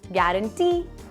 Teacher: The right syllable here to put pressure on is the last one.